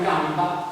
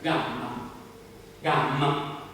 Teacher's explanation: Dinanzi a M si assimila